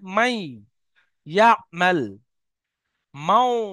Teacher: যেমন দেখেন মিম নুন ইয়া জাবার মাই, নুনটা সম্পূর্ণ ইয়ার মধ্যে ঢুকবে না, কিছু অংশ নুনের বাকি থাকবে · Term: ঈদগামে নাকিস